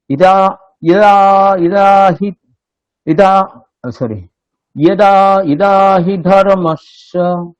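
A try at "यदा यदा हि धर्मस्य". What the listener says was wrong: ইদা নয়, অদা, ই অদা, ইয়দা।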